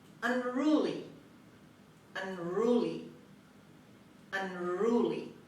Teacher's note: The stress is on R on the second syllable. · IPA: /ʌnˈruːli/